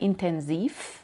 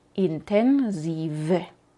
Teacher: cuando lo usamos sin terminación, es con F, no dejamos sonar la voz al final, intensiv. Pero cuando tenemos una terminación de adjetivo como intensive, entonces la V está al inicio de la última sílaba y sí podemos dejar sonar la voz intensive.